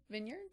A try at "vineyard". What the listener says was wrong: I know it says vineyards, but I think it's pronounced vineyard when you're talking about wine.